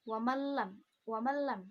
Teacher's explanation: dia diidghamkan tapi tanpa ada dengungnya, tidak boleh didengungkan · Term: idgham bila gunnah